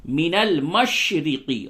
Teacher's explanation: را کو زیر ہے باریک پڑھیں گے ، من المشرقی، قاف کو صحیح سے ادا کریں، من المشرقی